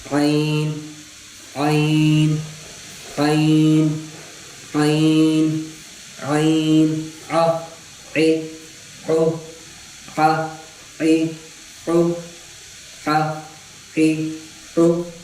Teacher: عین کا مخرج یہی ہے کہ حلق کا درمیانی حصے سے ادا ہوتی ہے، نہ زبان کی، نہ اس حصے سے جو منہ کی طرف ہے، نہ اس حصے سے جو سینے کی طرف سے.